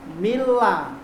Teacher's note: cara membaca idgham bilagunnah huruf nun nya hilang masuk ke dalam huruf bilagunnah tadi tetapi tidak disertai dengan dengung contohnya tulisannya Min ladunka dibaca Mila tidak mi ulah Tapi Mi